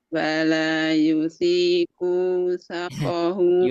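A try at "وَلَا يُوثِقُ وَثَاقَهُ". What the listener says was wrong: Yu-nya panjang. Wala yusiku wasa.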